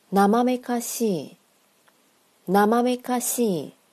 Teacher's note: 感觉到这个西再加上了一以后拖长了吗